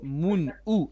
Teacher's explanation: It's mun, u, not o.